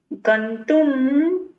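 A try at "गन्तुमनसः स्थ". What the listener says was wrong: गंतु मनसस्थः। समास में क्या होता है? हाँ, इसमें गंतुम नहीं है, गंतु मनसः स्थ। अर्थात समास जब किया जाता है तब इसमें गंतुम में जो मौ है उस मौ का लोप हो जाता है, इसलिए सिर्फ गंतु मनसः स्थ।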